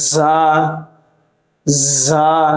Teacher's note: জিহ্বার আগা সামনের নিচের দুই দাঁতের পেট ও আগার সঙ্গে লাগিয়ে উচ্চারণ করতে হয়। জা। দুই দাঁতের মাঝখানে হালকা ফাঁকা থাকবে এবং বাতাস জারি থাকবে।